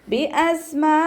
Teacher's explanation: മീം സാക്കിനയുടെ നിയമത്തിലുള്ള ഇഖ്ഫാ. അപ്പോൾ മീം സാക്കിനയെ മറച്ചു വെച്ച് മണിച്ചോതി കൊടുക്കുക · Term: ഇഖ്ഫാവ് ഷഫവി